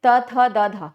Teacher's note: दांत में जब तक टच नहीं करेगा हमारा जीभ तब तक हम उसको नहीं बोल सकते। बिना दांत को टच किए हम त वाला सीक्वेंस नहीं बोल सकते।